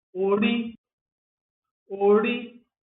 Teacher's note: com tom médio e alto, para identificar alma, essência, cabeça de uma pessoa